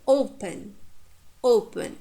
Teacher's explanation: The second syllable is short. Therefore, we stress the first syllable.